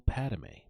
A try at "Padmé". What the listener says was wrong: How do you say your name like that? You add a syllable. Like you say Padme